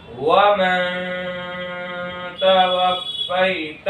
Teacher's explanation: فا کے اوپر تشدید ہے، تشدید والے حرف کو 2 مرتبہ پڑھتے ہیں، ایک بار پیچھے والے حرف سے ملا کر اور ایک بار خود اسے تشدید کی آواز میں ایک قسم کی بھی سختی ہوتی ہے، اس کو حروف مشدد کہتے ہیں۔ یا ساکن سے پہلے زبر ہے، اس لیے یا لین ہوگا۔ یا لین کو نرم آواز کے ساتھ جلدی پڑھے